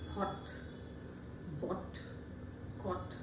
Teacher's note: this is a back vowel, very close to open position, and is a rounded vowel